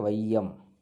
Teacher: வரும் பொழுது இரண்டு மாத்திரை அளவு அதுவே சொல்லினுடைய முதல்ல வந்தாக்க ஒன்றரை மாத்திரை ஐகாரம் சொல்லின் முதலில் வரும் என்பது ஒன்றரை மாத்திரை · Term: ஐகார குறுக்கம்